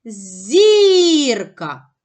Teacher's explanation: наголос падає на перший склад на склад зір